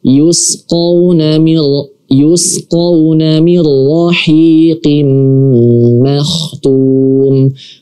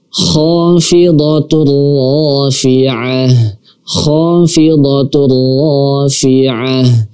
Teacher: Cukup kita masukkan tanwinnya ke dalam huruf ra tanpa mendengungkan. Kenapa? Karena di sini adalah huruf idgham bila gunnah, ya, bila gunnah.